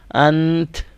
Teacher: تا کا صرف جو شروعاتی ساؤنڈ ہے، جو سٹارٹنگ پارٹ ہوتا ہے تا کا، وہ ساؤنڈ ہم نے پیچھے والے لیٹر کے ساتھ تھوڑا سا دے دینا ہے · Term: اسٹاپ ساؤنڈ